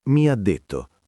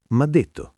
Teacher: la I di mi quasi non c'è.